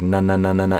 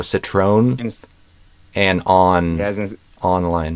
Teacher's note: I would aim, I think, for a tongue tip N, where it's like na just at the end of the word.